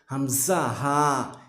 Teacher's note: হলকের শুরু হইতে হামজা হা